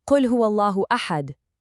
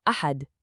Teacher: the correct way has this beautiful resonant echo on the dal right at the very end. But if you close your mouth tightly and stifle that stop, it turns into a blunt, trapped, unrecognizable ahad. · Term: qalqala